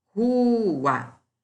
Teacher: Rua é um dissílabo. Como a sílaba tônica está em ru, paroxítona.